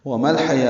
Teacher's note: یا کھڑا زبر دو حرکات لمبا کریں گے، واو نہیں پڑھیں گے.